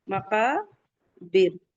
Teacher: काफ के बाद का अलिफ मद्दा है, 2 काउंट। और बिर, रा साकिन से पहले जेर आ रहा है तो रा को बारीक पढ़ेंगे